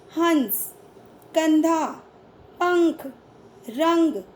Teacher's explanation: इनका उच्चारण करते समय हवा नाक से बाहर निकलती है, जैसे हंस, कंधा, पंख, रंग आदि। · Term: अनुस्वार